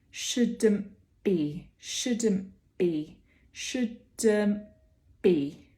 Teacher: For shouldn't be, we actually close the lips before the b comes along. We might have a little bit of glottalization happening in here as well at the same time.